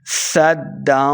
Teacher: سین پہ سیٹی کی آواز آئے گی صدا آگے دال کے ساتھ ملانا ہے دال مشدد ہے صدا